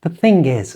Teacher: native speakers, when they're saying this, will move the G from the end of thing across to the start of is.